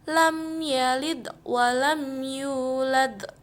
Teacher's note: maka dizohirkan makhraj dan sifat mimnya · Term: izhar syafawi